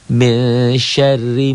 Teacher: Mesyar, ro ini juga tipis. Ro-nya double, ada tasdid. Double aja, jangan ditahan. Tipis karena barisnya di bawah, ini kasroh.